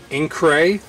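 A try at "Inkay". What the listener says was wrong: There's no R.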